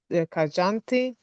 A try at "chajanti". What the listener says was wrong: Not kajanti. Chajanti. Yes, because in Pali, kajanti means K. If it is C, ch. Right, ch.